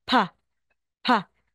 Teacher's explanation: pag nalagay po sa initial position at middle position May hangin pa rin din po aspirated